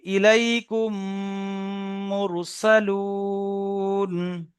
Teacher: মিম সাকিনের পরে যদি মিম আসে, তাহলে মিমের সঙ্গে মিমকে মিলিয়ে একালি পরিমাণ গুণনা করে পড়তে হবে, একে ঈদগামে স্বাভাবিক বলে।